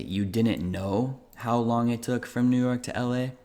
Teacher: it's also common to just keep a standard statement construction like affirmation you didn't know and then you have the intonation of a question